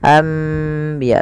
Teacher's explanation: Membalikkan suara nun menjadi suara mim. Awalnya anbiya Allah, karena bertemu dengan ba maka diganti dengan mim, maka dituliskan di atasnya dengan bentuk mim ini agar dibaca anbiya sambil ditahan 2 harokat. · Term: iqlab, iklab